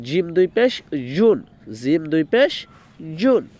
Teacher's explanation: এরপরে জিম, জিম দুই পেশ জুন, জিমটা খুলবো, জিমটা হবে জিব্বার মধ্যখান তার বরাবর উপর তালুর সঙ্গে লাগায় তারপর বলতে হয় জিম।